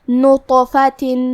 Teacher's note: طو حروف التفخیم میں سے ہے تو ہم یہ حرف کو بھاری آواز میں اور منہ پھلا کے پڑھیں گے، اور کیونکہ اس پہ جزم ہے لہذا یہاں طو کا حکم ہے قلقلہ۔